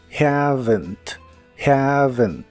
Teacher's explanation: juntos Haven la v o chica como la conozcas en inglés es labio dental es decir usas los labios y los dientes para producirla ya que pones tus dientes superiores sobre tu labio inferior para restringir el aire y soplas mientras haces que tu garganta vibre y por último la e se pronuncia muy suave Haven Haven